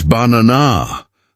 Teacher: The middle syllable is louder and longer. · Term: Word stress